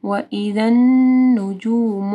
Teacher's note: وَإِذَا یہاں پہ بھی ذا کے مخرج کا خیال رکھنا ہے. نون کے اوپر شد ہے ٹھیک ہے یہاں پہ غنہ ہوگا